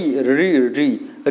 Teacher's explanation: आपका जीभ मुड़ करके पीछे साइड जा रहा होगा, जहाँ पर टच हो रहा होगा उसी को हम कहते हैं दोस्तों मूर्धा